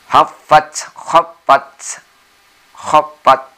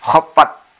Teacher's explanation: ini ta, ketika mati harus ada bunyi desis, s ya. Khaffat, khaffat, khaffat, ada desisnya.